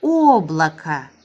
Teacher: Amma bu o vurğusuz olduğuna görə biz avtomatik onu a kimi oxuyuruq.